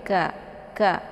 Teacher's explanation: Kemudian ka ini dibaca pendek, ka ya. Makharijul huruf ka ini ya tepatnya di pangkal lidah agak sedikit ke bawah daripada huruf qa ya, daripada qa.